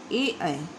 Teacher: इसका सूत्र है ए दैतो कंठ तालु, ए और ए का उच्चारण स्थान कंठ और तालु है।